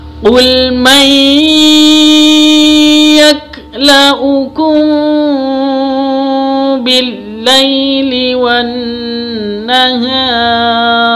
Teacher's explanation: kita bisa ngambil dari nun tasydidnya bacaan gunnah, harus didengungkan.